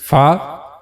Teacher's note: So for pronouncing fa we have to use edges of the upper front two teeth touches the inner side of the lower lip